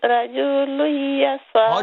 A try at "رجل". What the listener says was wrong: رجل, not رجل, don't stretch, sister. Sister, you need to, you're stretching too much.